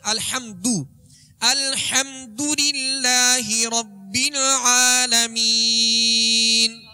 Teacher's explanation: लिहाजा हा नहीं बल्कि हा, अल हम्द आगे दाल है, दाल पर पेश है तो पेश को अदा करते हुए दोनों होंठों को कामिल गोल करेंगे, मजहूल नहीं पढ़ेंगे मारूफ पढ़ेंगे।